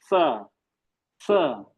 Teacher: ये सा जबान की नोक बाहर निकली, सा ये सा जो है, ये जबान की नोक नीचे के दांत में लगती है, स। और ये श जबान की बीच से निकलता है, श।